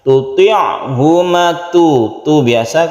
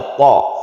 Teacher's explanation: Tuti'huma ada rongga atas ke langit-langit, to itu ya, to. Tuti'huma makhrajnya hampir sama, tapi to ini lebih sulit daripada ta, yaitu lidah kita itu agak ke langit-langitnya. Ini namanya huruf isti'la ya.